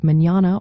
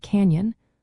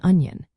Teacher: The correct sound of the letter N tilde, or EN as it is called in Spanish, is like the NY in the English word canyon or the NI in onion. It is a distinct palatal nasal sound, where the middle of your tongue touches the roof of your mouth as air passes through your nose